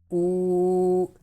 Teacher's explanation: We have learned in previous lessons that if Pesh comes before Waw Sakina, then Waw will be converted into Waw Madda, and Waw Madda will be stretched up equal to 1 second.